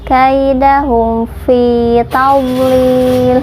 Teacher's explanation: fi dibaca panjang 2 harokat karena hukumnya mad tabi'i